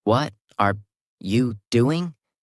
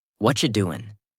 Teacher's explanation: When native speakers talk, they don't say, What are you doing? They say, What you doing? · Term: connected speech